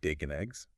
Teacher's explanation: The and practically disappears. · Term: blended together